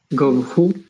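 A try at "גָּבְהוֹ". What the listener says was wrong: But this isn't who, it's ho. So the accent is here, right? Yeah, this is open and long. This is closed and short because it's unaccented. So this is Gov Ho, his height. Gov Ho.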